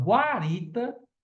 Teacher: na palavra Guarita aí não é dígrafo porque eu consigo escutar o som do U